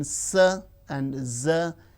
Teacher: alveolar, the teeth ridge and the blade of the tongue